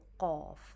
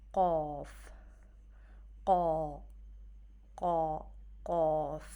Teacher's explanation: Qaaf is root of the tongue touching the soft palate